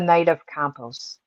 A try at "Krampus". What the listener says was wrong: Campus. There's a K in there.